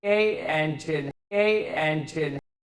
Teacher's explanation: If you have the strong form of the indefinite article a separated from a following vowel by hard attack, the result sounds exactly the same as the number 8, pronounced with trendy glottling of the final T. · the result sounds exactly the same as the number eight, pronounced with trendy glottaling of the final T